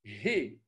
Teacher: Le dalet, c'est comme le D. Le he, c'est un he fortement aspiré de l'allemand hand